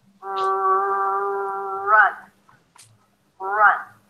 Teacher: So the lips round, especially when the R appears at the beginning of words. Run, run. You turn the sound off and you look at my lips, it's going to sound like I'm saying one.